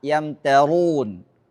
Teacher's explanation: Jadi tidak diidghamkan, tidak diikhfakan. Tapi dibaca izhar, artinya mimnya sangat tampak jelas ketika diucapkan.